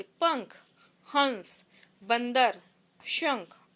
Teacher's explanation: अनुस्वार जो है सिर्फ नाक से निकलती है।